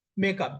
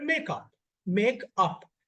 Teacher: There's a pause between make and up.